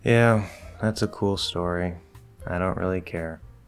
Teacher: Flat plus middle will sound disinterested, bored, just generally unengaged.